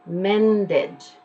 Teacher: already ends in a D so the past tense will be mended you get to pronounce the entire syllable